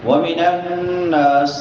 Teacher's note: شد والا نون ہے یہاں پہ غنہ ہوگا اور نون کو لمبا کریں گے کیونکہ اس کے بعد الف مدہ آ گیا ہے، الف سے پہلے زبر ہے، ناسی سین ہے سیٹی والے حروف میں سے، تو سیٹی کے ساتھ ادا کریں گے۔